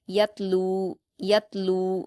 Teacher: ता पर जज्म है या को ता से मिलाकर पढ़ेंगे और कलकला नहीं करेंगे। · लाम पर व मद्दा है। दो हरकात खींच कर पढ़ेंगे। यतलू यतलू स्वाद पर हरकत जल्द पढ़ेंगे। · یا کو تا سے ملا کر پڑھیں گے اور قلقلہ نہیں کریں گے،